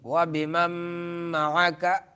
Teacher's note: نون ساکن ہے اس سے آگے میم آ رہا ہے مدغم ہے تو اس کو ادغام کریں گے